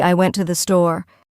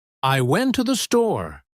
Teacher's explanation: But in real speech, we say, I went to the store. The words to and the become so weak that they almost disappear. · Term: unstressed words